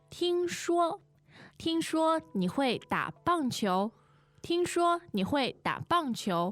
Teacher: now this 听说, 2 first tones